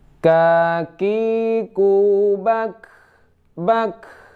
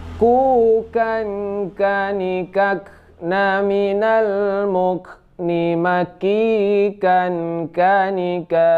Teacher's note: Nah, ada sedikit angin yang keluar saat sukun. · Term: huruf K